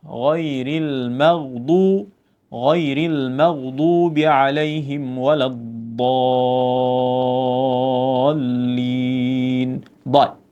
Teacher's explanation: huruf yang hampir dal, tetapi bila ditebalkan dia jadi dad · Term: huruf dad